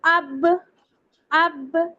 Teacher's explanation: وہ دونوں لپس کے ویٹ پارٹ سے ادا ہوتا ہے، یعنی لپس کا جو اندر کا پارٹ ہوتا ہے نا، وہاں سے ادا ہوتا ہے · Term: با کا مخرج